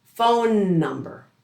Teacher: The trick is we don't pronounce that consonant twice. Instead, we blend the two words together and say that repeated consonant only once, but we elongate it slightly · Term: linking the same consonant